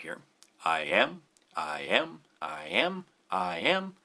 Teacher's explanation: the fact that it's iambic tells us the stress pattern that it is an unstressed syllable followed by a stressed syllable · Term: iambic pentameter